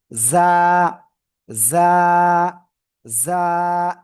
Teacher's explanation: এই যে দেখেন, এই যে জিহ্বার আগা, এই যে নিচে দুই দাঁতের পেটের সাথে লাগান, ভিতরে লাগিয়ে একটু ঝিঝি পোকার ন্যায় আওয়াজ হবে।